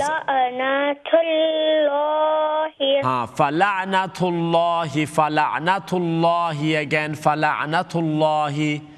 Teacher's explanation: Again, the name of Allah is going to be full mouth